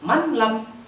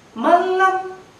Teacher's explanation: Tulisannya manlam, tapi dibaca malam. Malam, lebur huruf na-nya, masuk huruf lamnya